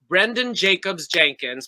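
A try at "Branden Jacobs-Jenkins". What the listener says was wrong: You added another S. You said Brandon Jacobs Jenkins. One Jacob. It's Jacobs.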